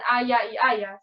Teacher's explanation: Es un cambio fonético que consiste en pronunciar de manera idéntica la letra Y y el dígrafo EY. Así la EY no se pronuncia como lateral palatal aproximante, sino igual como la Y, como central palatal aproximante o central palatal fricativa. Entonces, ahí no hay una diferencia entre pollo con ella y pollo con Y.